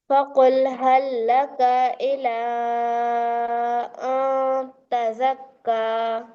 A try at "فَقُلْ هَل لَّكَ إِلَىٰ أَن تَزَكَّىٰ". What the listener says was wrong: हल्ला को फिर काफ को थोड़ा खींच दिया, हरकत को नहीं खींचना।